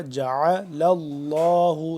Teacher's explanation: حمزہ سے جدا ہونا چاہیے، جعل اللہ نہیں ہوگا، جعل اللہ، لفظ اللہ کو پر کر کے پڑھیں گے کیونکہ اس سے پہلے لام ہے